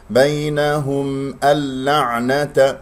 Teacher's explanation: نون لام إدغام، نأكل النون بغير غنة